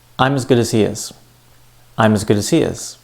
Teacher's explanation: So sentence stress means the words that are stressed in a sentence. Notice, not only did I say the stressed words longer and louder, but I also said the unstressed words faster.